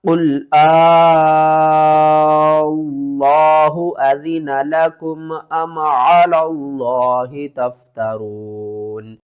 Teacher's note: لفظ اللہ کو پر کر کے پڑھنا ہے، اور دوسرا لفظ اللہ سے پہلے والا جو لام ہے اس کو آپ نے چھوڑ دینا ہے